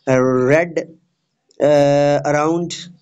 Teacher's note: in the BBC accent of English, R is only found before vowels, as in red, around, but never before consonant or before a pause.